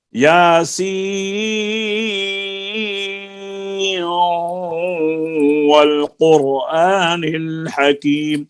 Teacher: اب ہم یہ ہے طریقے ترک جزری میں اظہار، اور ترک شاطبی میں اس طرح پڑھیں گے، یاسین والقرآن الحکیم، سین کی مد پوری کر کے پھر چار الف کے برابر اس کی مد پوری کر کے تو سین نون کو ہم واو میں ملا دیں گے، نون کی آواز نہیں آئے گی، صرف غنہ نظر آئے گا